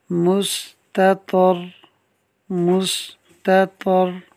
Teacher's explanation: تا اور تا باریک پڑھا جائے گا، طا حروف مستعلیہ میں سے اس کو پر پڑھنا ہے۔ آگے را ساکن سے پہلے طا پر زبر ہے تو را کو بھی پر پڑھنا ہے، تو یہ تمام چیزوں کو ذہن میں رکھنا ہے ہم نے۔ · مستطر، اس میں دیکھیے خاص جو دھیان میں رکھنے والی بات ہے، تا اور تا باریک پڑھا جائے گا، طا حروف مستعلیہ میں سے اس کو پر پڑھنا ہے۔ آگے را ساکن سے پہلے طا پر زبر ہے تو را کو بھی پر پڑھنا ہے